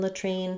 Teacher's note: Because we're stressing on this second syllable, the T does come out, so not ladrine, but latrine. We do have a burst of air there, so trine, like in the word tree.